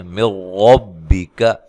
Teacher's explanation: را کو موٹا ادا کرنا ہے، اور یہاں نون ساکن کا ادغام ہے، بلا غنہ ہے۔